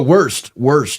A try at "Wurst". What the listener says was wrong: W's in German are pronounced as V's, so Wurst.